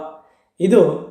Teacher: ದಂತೋಷ್ಠ ವರ್ಣ ನಮ್ಮ ಹಲ್ಲು ಮತ್ತು ತುಟಿಗಳ ಸಹಾಯದಿಂದ ವ ಎಂಬ ಅಕ್ಷರ